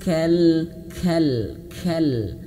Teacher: huruf kaf itu dia memiliki sifat ee hames ya hammas kal ada sedikit angin